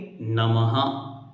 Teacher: उसको बोलते समय कैसे बोलेंगे नमः तो ह का उच्चारण आएगा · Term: विसर्ग